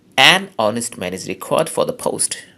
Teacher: যদি জোর দেওয়া হয় এই অ্যানের উপর বেশি জোর দেওয়া হলে, গুরুত্ব দেওয়া হলে, তখন এটাকে উচ্চারণ করতে হয় অ্যান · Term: স্ট্রং ফর্ম